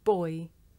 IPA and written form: bɔɪ (boy)